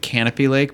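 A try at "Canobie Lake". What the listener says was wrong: It's a B, not a P.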